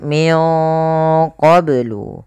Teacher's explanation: ini nunnya disamarkan ke huruf qaf karena dia ada bacaan ikhfa. Di sini ikhfanya ikhfa abad, ikhfa yang jauh.